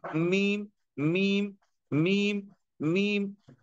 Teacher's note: दोनों होंठों के खुश्की वाले हिस्से से मीम अदा होता है